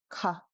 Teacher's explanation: It is mid aspiration, ka. So we get a little flutter, not no flutter, not big flutter. And because it's Baby Bear who's short, it's low tone, ka, ka.